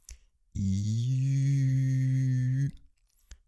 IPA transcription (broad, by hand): y